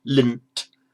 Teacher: The difference where the tongue is for the lint, the tongue automatically goes to the same place in the mouth where the t is going to come out, lint. Tongue doesn't have to move its position.